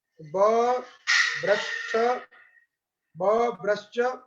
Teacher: अब बभ्रश्च में जो श और च है वहां पर ध्यान देना है, जो तालव्य शकार सुनाई दे रहा है वो तालव्य शकार दंत सकार के स्थान पर हुआ है